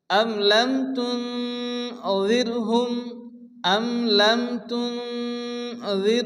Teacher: নুন সেকেন্ডের পরে ইকফা হরফ দাল এসে এক আলিফ গুণনা হবে